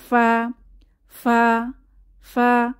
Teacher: উপরের দাঁতে নিচের ঠোঁটে বাতাস চালু ফা, কারণ ফা উচ্চারণের সময় আমাদের মুখ থেকে বাতাস বের হয়